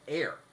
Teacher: This is what they call glottal fry, where you're running out of air